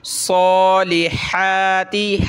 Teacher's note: वअमिलुस्सॉ, पीछे जो था अमिलु उसका लाम यहाँ साद से प्लस होगा। साद पे तशदीद है, खड़ा ज़बर है तो एक अलिफ की लिमिट में खींचेंगे, मोटा करेंगे। सॉलिहाति, हा खड़ा ज़बर हा, हाति सॉलिहाति।